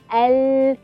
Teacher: Kita boleh rasa sisi lidah paling hujung sehingga ke akhirnya yang menyentuh gusi depan atas. Keluarnya huruf lam al.